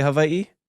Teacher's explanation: Hawaii, you have the okina, the glottal stop between the two I's.